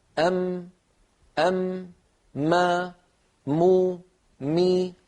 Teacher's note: تجدون بأن الأنف يعمل مع الشفتين في إخراج حرف الميم، بدليل لو سددنا الأنف وقلنا أم، ما، مو، مي، نجد بأن الصوت قد اختل ولم يعد ميما صحيحة. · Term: الغنة